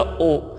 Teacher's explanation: ठीक है, ऊ को बोलते समय हमारे होठ व्रत का आकार ले लेते हैं, इसी प्रकार इन वर्णों को भी बोलते समय, जैसे हमने बोला ओ और फिर हमने बोला ओ, तो हमारे होठ तुरंत व्रत का आकार ले लेते हैं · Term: व्रतमुखी